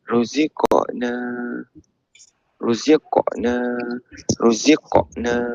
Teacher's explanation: qalqalah sughra so kena baca pantulan suara qaf tu